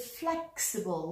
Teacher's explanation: the adjective flexible stressed on the first syllable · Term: word stress